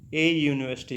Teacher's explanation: और जो also used किन के साथ, यहाँ पे यूनिवर्सिटी, ए यूनिवर्सिटी, यहाँ से यू से शुरू हो रहा है, यू एक वावल है पर इसके जो साउंड है विच sound like ए consonant, यू से साउंड शुरू है ना, यू, ये की साउंड शुरू है